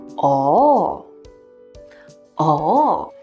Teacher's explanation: The third usage of oh is to show understanding and realization. It is marked as the fourth falling tone, but in real life, people often say it with a twist, like a combination of tones